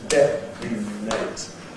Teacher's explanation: Notice that this N in detonate has to be syllabic. This word still has 3 syllables, detonate. And it wouldn't be possible in this word to use a plain N and say detonate.